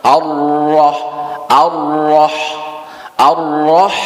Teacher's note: ra tasdid dibaca takkhim atau tebal